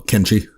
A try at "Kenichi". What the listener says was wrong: I say he just missed the I, which like I said with the lettering that's kind of close.